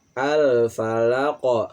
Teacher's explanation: falaq ini adalah hukumnya adalah qalqalah yang memantulkan bacaan